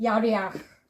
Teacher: So it'd be read as vowel sound first, a, then consonant sound, kha.